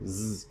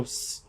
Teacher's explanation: when you make a Z sound, you are simply making an S sound, but your vocal folds are vibrating at the same time